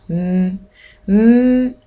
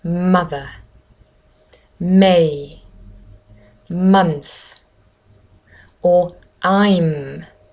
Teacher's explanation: my voice box vibrates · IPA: /m/